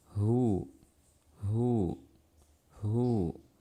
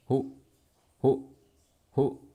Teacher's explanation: Jadi ada suara mengalir sebelum kedua bibir saya maju. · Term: huruf H